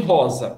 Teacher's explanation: Um S entre duas vogais. Ele é pronunciado sempre como um Z. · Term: som de Z